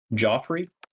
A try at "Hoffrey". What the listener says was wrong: Yeah, it looks like it's Joffrey, but it's pronounced Hoffrey.